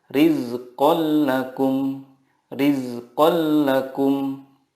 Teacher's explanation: Idgham bila gunnah adalah nun sukun atau tanwin bertemu dengan lam atau ro. Cara membacanya, meleburkan nun sukun ke huruf berikutnya tanpa gunnah. Contohnya, tanwin bertemu lam, rizqal lakum.